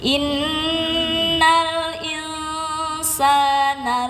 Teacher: In jangan lupa nun mati jumpa sin ikhfa ya. Jadi dilamakan ditahan dulu sebentar. Innal insana inna nun tasdid harus sama panjangnya dengan insana. · Innal insana inna nun tasdid harus sama panjangnya dengan insana. Nanti bisa dirasakan sendiri saat membaca.